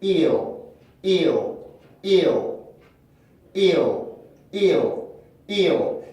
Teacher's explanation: 그러니까 여기에서도 마찬가지로 모음 발음에서 L 발음까지 혀가 움직이다 보니까 내가 만들려고 하지 않지만 혀 움직임에 의해서 공기가 변하면서 저절로 슈아 소리를 만들어내게 돼요. 그 소리가 바로 다크 L 발음의 특징입니다.